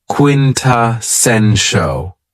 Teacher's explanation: this word has 4 syllables, and the stress is on the third syllable, quintessential.